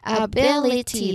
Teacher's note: Stress on the third syllable right from the end.